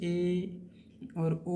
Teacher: और अर्ध संवृत्त क्लोज, आधा क्लोज कैसे होता है हमारा मुंह, जब ए और ओ जब आप बोलोगे तो आपका मुंह जो है हाफ क्लोज होगा। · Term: अर्ध संवृद्ध